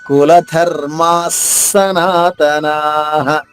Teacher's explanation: ఒత్తుధ నొక్కి చెప్పాలి అంటే మనకి ఎక్కువ శ్వాస బయటికి వెళ్తుంది అందుకనే దాన్ని మహా ప్రాణాక్షరం అంటారు